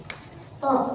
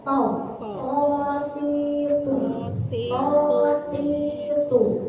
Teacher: Tok itu ujung lidah menyentuh gusi gigi seri atas. Tok. Jadi ketika kita mengucapkan huruf tok itu tidak harus monyong.